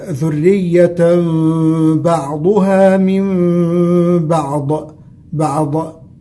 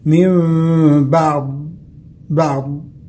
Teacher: تشعر باستطالة اللسان على الأضراس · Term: صفة الاستطالة